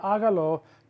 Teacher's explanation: notice we're stressing the a at the beginning there's going to be an accent on that first day aalo